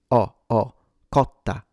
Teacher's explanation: There might be some regional varieties where that becomes closed, but in standard accentless Italian, this would be an open o · the O is open. O, cotta, not closed, cotta.